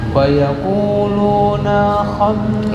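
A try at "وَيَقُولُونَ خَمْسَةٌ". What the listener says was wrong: Nah pendek. Bukan wa yaquluna khamsat. Itu kepanjangan dina. Wa yaquluna khamsatun.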